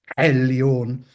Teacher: you can hear it as an epiglottal trill, which is a realization one often hears, for example, in Arabic from, say, Iraq today.